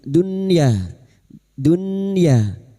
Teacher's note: Tidunya berikutnya nun sukun bertemu ya izhar wajib atau izhar mutlak bertemunya nun sukun dengan ya atau wawu dalam satu kalimat. Nun sukun dibaca jelas tanpa mendengung